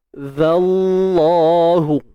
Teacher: Lam pada kalimah Allah pun sama tebal. Tebal. Sebab apa tebal? Sebab sebelumnya baris atas.